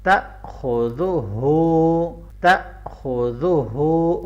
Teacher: تا، خا کو موٹا پڑھیں گے، تا خو، زال کو آپ نے نرمی سے پڑھنا ہے اور ہا کے اوپر الٹا پیش ہے، تھوڑا لمبا بھی کرنا ہے اور گلے کے نچلے حصے سے آپ نے اس کو ادا کرنا ہے